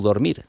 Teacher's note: Si conjugamos el verbo dormir, tenemos una O tónica en el infinitivo, pero después si tenemos que hacer el xerundio y es durmiendo, no dormiendo, y es durmiendo.